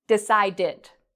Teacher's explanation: Decide ends in a d sound. So we can add the ed and it makes an id pronunciation